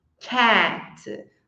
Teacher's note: em inglês nós temos um som que fica entre o e e entre o a que é quando a gente faz a boca do a e fala o som do e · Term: som do gato